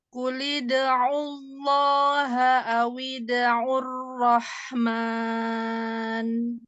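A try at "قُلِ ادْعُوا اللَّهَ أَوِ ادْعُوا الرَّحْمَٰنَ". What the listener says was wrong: Di sini ro-nya coba ditebalkan. Untuk menebalkan memang agak diangkat pangkal lidahnya ya. Ar-Rahman.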